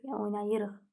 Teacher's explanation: Ona görə vurğu qəbul etmir. Vurğu ıq-dan əvvələ düşür.